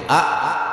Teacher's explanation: আলিফ বলতে যেমন 1 নম্বর মাখরাজ কণ্ঠনালীর শুরু হইতে আ আলিফ উচ্চারিত হয়। আলিফ পড়তে 2 ঠোঁট মিলবে না, লম্বা হবে না।